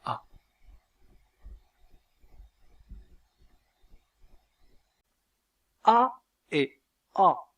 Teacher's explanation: la voyelle a est la voyelle la plus ouverte de la langue française